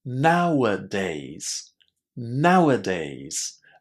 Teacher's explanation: There is a little h sound in between now and days.